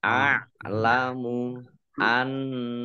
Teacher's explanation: A'lamu annallaha nun tasdid dibaca gunnah atau mendengung ditahan 2 harokat. Allahnya dibaca tebal karena harokat di depannya fathah